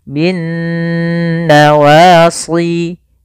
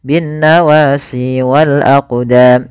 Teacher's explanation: cara membacanya yaitu suara nunnya kita tahan bin nawasi kesalahan yang sering terjadi tidak menahan gunahnya contoh binnawasi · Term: ghunnah, gunnah